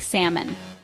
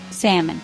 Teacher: The L is silent.